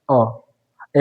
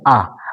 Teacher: तो आप देखेंगे कि अ में थोड़ा मुंह कम खुलता है और जैसे आप बोलते हैं तो ज्यादा खुलता है, यानी अ की अपेक्षा इसमें ज्यादा समय लगेगा दीर्घ स्वर में, इसकी अपेक्षा अ में आधा समय लगेगा ह्रस्व स्वर में